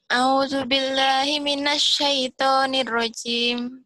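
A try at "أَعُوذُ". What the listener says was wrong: A-nya harus jelas ya. Harus A-nya harus jelas, bacanya jangan buru-buru. A'u dengan hau. A'u, a'u. A'u ya.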